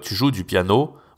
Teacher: même quand on pose une question, on va pas autant monter la voix